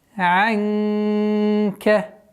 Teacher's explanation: Здесь у нас ихфа, мягкая ихфа. В размере двух огласовок удерживаем. Назализация.